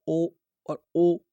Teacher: कंठ के साथ होठ आपके गोलाकार हो रहे हैं · अब इसमें कंठ ओष्ठ, दोस्तों कंठ में होठ लग गया, अगर आप बोलोगे ओ और ओ, कंठ के साथ होठ आपके गोलाकार हो रहे